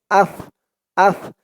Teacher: এই সার আওয়াজটাও একদম নরম পাতলা হবে জিহ্বার মাথা উপরের দাঁতের মাথার সাথে লাগবে